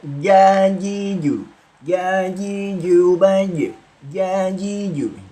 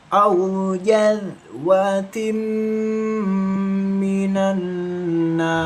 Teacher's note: Karena jim ini termasuk sifat jahr. Jadi tidak boleh ada aliran angin yang keluar.